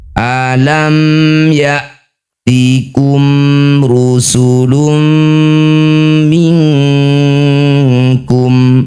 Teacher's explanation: Bunyi mim sukun. Rapatkan bibir dengan sempurna. Tidak usah dengung. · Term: izhar syafawi, idhar syafawi